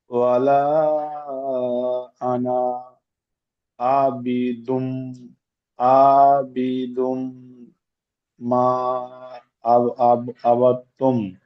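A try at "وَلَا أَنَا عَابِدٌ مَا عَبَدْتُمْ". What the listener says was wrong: জি, মাশাআল্লাহ, খুব সুন্দর। ঠিক এইভাবে বানান করে করে পড়বেন।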